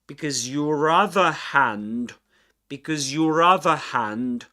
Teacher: we've got um a linking R sound connecting these two words